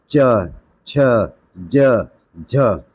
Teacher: तालव्य व्यंजन है। तालव्य वो होते हैं जिनमें जीभ पीछे की तरफ मसूड़ों पे जोर मारती है।